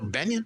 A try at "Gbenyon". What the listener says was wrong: Yeah, it's Benyon. The G is silent. It's Gbenyon, but yeah, we don't say the G.